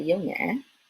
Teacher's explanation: Okay? And so in the south, they say dấu nhã, which almost sounds like hỏi. Right? In the north, they distinguish.